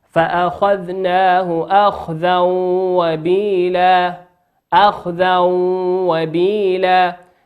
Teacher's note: تنوين في كلمة أخذا أتى بعده حرف الواو والواو من حروف الإدغام بغنة يغن بمقدار حركته.